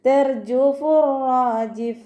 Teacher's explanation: ത മർബൂത്തയിൽ വഖഫ് ചെയ്യുമ്പോൾ ഹ സുക്കൂനിൻ്റെ സൗണ്ട് കൊടുത്തിട്ട് വഖഫ് ചെയ്യും